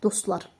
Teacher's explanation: T düşür, düşmə səbəbi çünki özündən sonra samitlə şəkilçi gəlibdir.